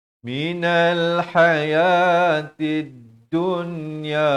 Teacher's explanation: Dunya izhar mutlak, jelaskan nun mati yang ada tanda mati asli ini.